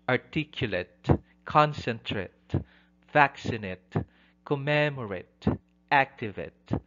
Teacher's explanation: The last syllable, particularly ATE ending, does not receive the primary stress.